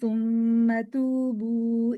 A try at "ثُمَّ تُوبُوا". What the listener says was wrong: ही लंबा जा रहा है।